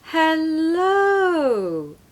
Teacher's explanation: it's like you start low and you go high and back low